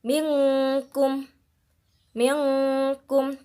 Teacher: minkum meongku di sini ada nun sukun bertemu dengan huruf Kaf maka kita membacanya dengan menyamarkannya menyamarkan nun sukun di sini menjadi seperti bunyi Eng · Menyamarkan nun sukun di sini menjadi seperti bunyi eng ketika bertemu dengan salah satu huruf ikhfa. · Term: ikhfa Haqiqi